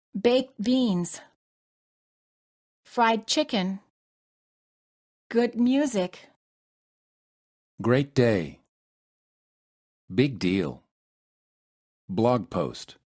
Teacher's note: you hold the final consonant of the first word keep in mind that the final consonant is a stop